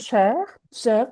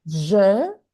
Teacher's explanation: It's more open. Je, it's closed.